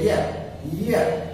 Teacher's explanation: आप बोल के देखेंगे या, एक बार बोल के जरूर देखेंगे या, तो आएगा क्या, या जो है पूरी जीभ जो है पूरा ऊपर जाकर के टच करेगी, यानी या का उच्चारण स्थान क्या होगा, तालव्य।